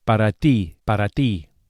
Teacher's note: the Spanish T is also softer than in English and produced with a flat tongue against the gum ridge against the top of the mouth